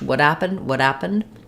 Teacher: the files what happened yesterday when there's more coming after happened happened is no longer stressed and I can drop my H sound